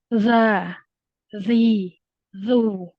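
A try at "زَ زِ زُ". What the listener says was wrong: Tajamkan lagi. Jangan za, jangan nempel ke gigi atas ya. letakkan ujung lidah di bawah ya, di bawah gigi bawah, ujung lidahnya ke gigi bawah. Terus suara itu keluar dari celah-celah. Za, zi, zu. Tajam.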